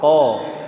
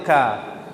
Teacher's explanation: Pangkal lidah berarti lidah paling dalam. Di sini ada pangkal lidah bagian dalam yaitu huruf ko. Dan pangkal lidah bagian luar yaitu ka.